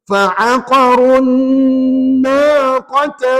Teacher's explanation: Dan kebetulan nun tu bersabdu. Maka ulama pesan kena bagi dengung bacaannya dua harakat.